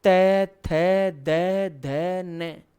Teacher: जब आप त वर्ग बोलते हो तो आपकी जीभ जो है वो ऊपर के दांतों से पूरी चिपकती है। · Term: तय वर्ग